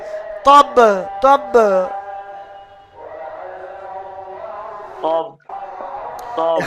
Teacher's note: এখানে সাকিন হয়ে যাচ্ছে থামার জন্য, ওই জন্য কলকলা হবে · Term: কলকলা অক্ষর